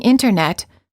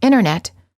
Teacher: the T after an N or an n Sound is often silent